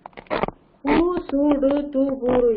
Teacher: கு சு டு து பு ரு என்ற இதழ் குவிந்து ஒலிக்கக்கூடியதாக இருக்கும் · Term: உகரம்